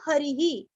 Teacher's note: हरि का री रस्व और विसर्ग का उच्चारण भी रस्व ही लेना है